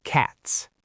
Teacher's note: The whole ending of the word is unvoiced. Short vowel, sharp T, sharp S.